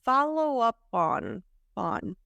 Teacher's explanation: I divided it it still has an opportunity for connection because we have the puff at the end of up and the vowel of on